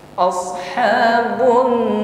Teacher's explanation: ditahan di situ ada Nun tas gunah musyadadah na Ya rnya Sukun sebelumnya fathah maka tafkhim hukumnya tebalkan bunyi rnya